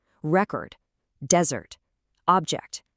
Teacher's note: When these words are nouns, the stress hits that first syllable.